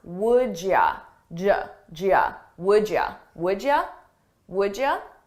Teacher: did you the same thing is happening here with would you you becomes Y and I combine those sounds